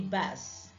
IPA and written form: bӕs (bass)